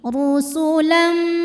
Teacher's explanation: bunyi m-nya tahan masuk disertai dengungan